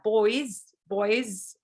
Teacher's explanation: even though you see that as written as an s in spelling uh in phonology it's actually a z it's a voiced sound